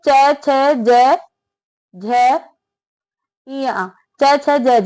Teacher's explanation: और ये च छ ज झ या च छ ज झ ये सारे बेटा तालु से बोले जाते हैं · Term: तालव्य